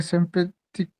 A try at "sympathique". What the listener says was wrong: सिम, ए की sound क्या होता है, आ, तो कैसे पढ़ोगे, सिम्पा, यस, वेरी नाइस, बस सिंपैथिक, कू नहीं, सिंपैथिक,